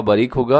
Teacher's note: बारिक में रा बारीक होगा